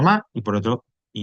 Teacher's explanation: El hiato, que ya hablaremos un poquito más adelante, son cuando dos vocales se escriben juntas, pero van en sílabas diferentes